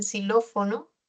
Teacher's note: la fricativa alveolar sa en xilófono